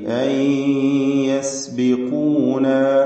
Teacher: സാക്കിനത്താനൂൻ യയിലേക്ക് ലയിപ്പിച്ച് മണിക്കണം. ഇത് വാമ്പിഗുന്ന നാഖിസ്.